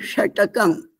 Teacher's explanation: मूर्धन्य श जीभ वरती करून श म्हणायचा